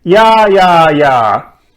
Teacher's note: you could say, Yeah, yeah, yeah, like that, with a falling tone.